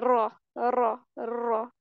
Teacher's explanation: जब हम इस तरह पढ़ रहे हैं तो हम देखते हैं कि इसमें एक रॉ नहीं होता, रॉ मल्टीपल होते। कारी जब पढ़ते हैं तो इसको यूं तकरार करके पढ़ते हैं और कुछ नहीं पढ़ते।